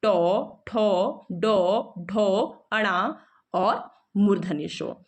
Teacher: इनका उच्चारण हमारी मूर्धा से होता है